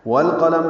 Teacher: لام ساکن پہ اظہار ہے، قاف پر ہے، لام باریک ہے، میم کے نیچے زیر ہے، جلدی پڑھیں گے۔